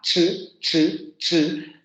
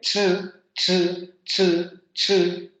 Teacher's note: Pero sabemos que las africadas tienen la característica de que el segundo momento o modo de articulación tiene que ser una fricación. Es decir, va a haber primero un momento de oclusión y luego un momento de fricación.